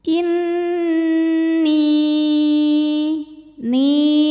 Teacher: didengungkan jadi bunyi n kita tahan sampai ada suara masuk hidung kurang lebih dua harakat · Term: ghunah musyaddadah